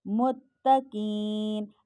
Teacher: قاف حرف مستعلیہ میں سے ہے، تو اس کو موٹا ہر صورت چاہے اس کے اوپر حرکات ہو یا نہ حرکات ہو